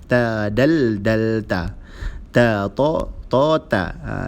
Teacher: di hujung lidah dan bersentuhan dengan gigi atas